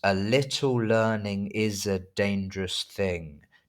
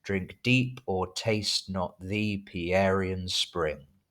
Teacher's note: iambic pentameter, 10 syllables per line, with the stress on the even numbered syllables